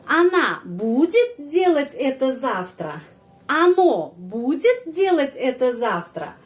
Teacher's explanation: Kalau kita menyusun kalimat tanya, ya, hanya pakai intonasi, yang penekanan intonasi berada pada kata akan, budu.